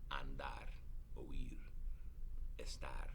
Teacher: they are pronounced naturally with an accent on the last syllable